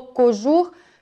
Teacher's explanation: якщо ми добре вимовимо це слово «кожух», що наше «о» наближається до «у»